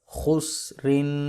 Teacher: را کے نیچے 2 زیریں ہیں لہذا اس کو موٹا نہیں کریں گے